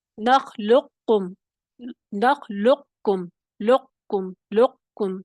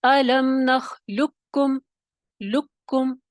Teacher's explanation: قاف کی موٹے والے کی آواز ختم ہو جائے گی، صرف باریک کاف آپ کو سنائی دے گا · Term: ادغام تام